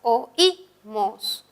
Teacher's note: el hiato tiene una vocal abierta, una vocal cerrada que es la I, y la I suena más. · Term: hiato acentual